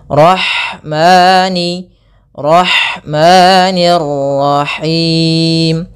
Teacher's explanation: Kemudian ada lafal ha, alirkan nafasnya pada lafal ha karena di sini ada hukum tajwid berupa ada sifat huruf ha yang itu sifat hamas, mengalirnya nafas.